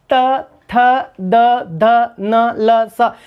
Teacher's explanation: जब हम उच्चारण करते हैं तो जिह्वा दांतों को स्पर्श करती है। देखिए आप बोल के देखिएगा, त थ द ध न ल स, यानी इन वर्णों को जब आप बोलेंगे तो जिह्वा दांतों को स्पर्श करेगी, इसलिए इनको दंत्य ध्वनियां कहा जाता है।